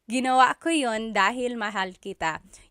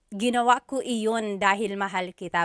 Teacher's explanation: You might hear people say, ginawa ko iyon dahil mahal kita, but usually the letter I sound is dropped